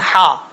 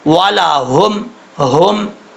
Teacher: پڑھا جائے گا، اکثر لوگ پڑھتے ہیں ہا، ایسا نہیں کرنا، یہ ہا جو ہے یہ اس حلق سے ادا ہوتا ہے جس حلق کا تعلق سینے کی طرف ہے ، تو یہ بھاری ساؤنڈ کے ساتھ پڑھیں گے، یہ سینے